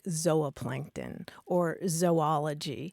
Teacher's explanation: the super traditional scientific pronunciation would be a long O sound, like zooplankton or zoology.